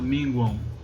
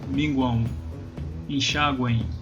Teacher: Então você já pronuncia aí uma vogal no lugar do M. Então vira aí um tritongo nasal.